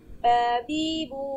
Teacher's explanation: Baba itu keluar dari kedua bibir-bibir